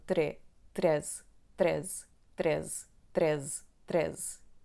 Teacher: Então não lemos a letra E no fim. A palavra está acentuada na penúltima sílaba